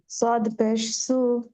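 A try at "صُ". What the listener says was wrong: সদ উচ্চারণটা হয়নি আপুর, সিনের মতো হয়ে গেছে। সদ উচ্চারণ করার জন্য মুখটা গোল করুন, গোল করে উচ্চারণ, হ্যাঁ। সদ উচ্চারণটা আরো শুনতে হবে।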